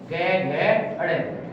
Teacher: उच्चारण के समय स्वर तंत्र में कंपन होने के कारण गुंज यानी कि ध्वनि पैदा होती है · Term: घोष वर्ण